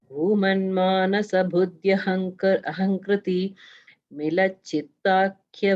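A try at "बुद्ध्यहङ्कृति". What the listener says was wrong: I think in the first line, you don't have to say Ahankriti explicitly. It's merged with Buddhi and Aham. So it's Buddhyahankriti. It's together.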